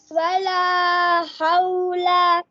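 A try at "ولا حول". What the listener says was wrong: इसको लंबा नहीं करना, खड़ी जबर नहीं पढ़नी। वला हौला। वला हौला।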